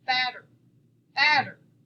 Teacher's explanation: we say the first syllable a little stronger and harder